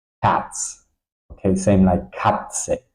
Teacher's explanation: It's a little bit basically like T and a long S. Okay, but it sound quite similar like in English the T S hats. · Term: T set